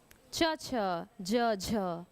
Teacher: अब भी पढ़े हैं हम, स्पर्श संघर्षी च छ ज झ, है ना, स्पर्श भी है और बोलने में संघर्ष हो रहा है